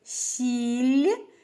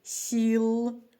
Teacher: у слові сіль останній звук ль м'який А у слові сіл звук л твердий · останній звук ль м'який А у слові сіл звук л твердий м'якість одного і того ж звука змінила зміст слова